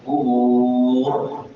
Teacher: پڑھیں گے۔ اور آخر پہ را ساکن ہو رہی ہے اور را سے پہلے بھی ساکن ہے اور اس کے اوپر پیش ہے، تو لہذا را کو پر پڑھیں گے، موٹا کر کے پڑھیں گے